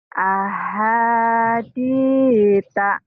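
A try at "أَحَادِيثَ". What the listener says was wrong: sa. Ini sa. Ahadi. iya, kenapa Ibu ngomong sa-nya di ta kan kalau dilatinkan TSA. Jangan dibaca T-nya ya Bu ya. Ahaditha. Sa aja, sa-nya tapi lembut. Sa-nya kayak cadel. Ahaditha, sa ya Bu. Karena kalau dilatinkan kan TSA.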